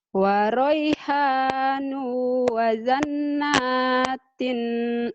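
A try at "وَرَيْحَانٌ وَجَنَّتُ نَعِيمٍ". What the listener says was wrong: Pendek. Jimnya keras. Jakarta, Jatinegara. Wajan.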